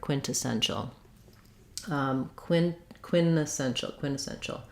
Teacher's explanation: I think we hear a true aspirated T here